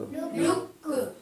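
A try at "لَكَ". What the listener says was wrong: لک نہیں، چھوٹا کاف ہے نا، لک، ہلکا سا جو ہے کاف نکلے۔ کاف میم زبر کم،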